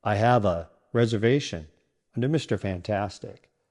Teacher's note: The words have and a blend together, and the a becomes a quick sound.